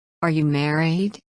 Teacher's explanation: Intonation rises at the end of the question.